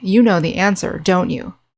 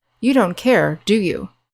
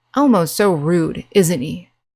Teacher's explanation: let's try the downward inflection. This will show that you're pretty sure about something or you're angry.